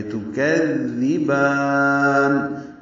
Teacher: تو کذبان میں تا کو معروف طریقے سے جلدی ادا کریں گے. کاف باریک ہے، دال سے ملائیں گے. دال کو نرمی سے ادا کریں گے